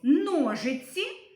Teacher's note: А у слові ножиці звук ц - м'який тому що ми його вимовляємо м'яко і ніжно